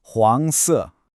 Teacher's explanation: that rising second tone on the first character and then the falling fourth tone